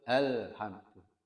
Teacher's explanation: Al itu melorot sedikit ya, memanjang sedikit saja.